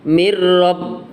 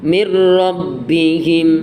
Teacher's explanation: Di situ ada nun sukun bertemu dengan ro, ya. Dibaca idgham bila gunnah, dimasukkan tapi tanpa berdengung. Mir rabb, nunnya masuk ke ro.